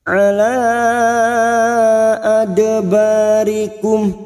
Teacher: dal sukun qalqalah sugra.